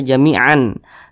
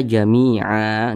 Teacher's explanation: Kemudian ketika kita berwaqaf pada huruf ain, maka dibaca jami'ah, jangan dibaca jami'an, tapi dibaca jami'ah dan dipanjangkan a-nya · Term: mad iwad